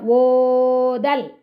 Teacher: ஓதல் மூன்று மாத்திரை அளவு ஓவ படிச்சிட்டு தால்ல படிக்கணும் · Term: செய்யலிசை அலபடை